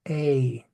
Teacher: the long a has almost a y sound in it